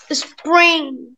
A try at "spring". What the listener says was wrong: ما تقولش ايه spring ، قول spring. ما تقولش اس، ما تقولش ايه.